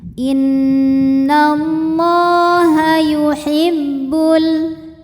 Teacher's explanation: Karena lam berbaris fathah panjang maka huruf lam panjang dua harakat. Innallaha yuhibbul. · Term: mad thobi'i muqaddar